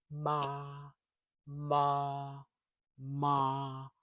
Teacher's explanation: Close your lips and let the sound hum through your nose.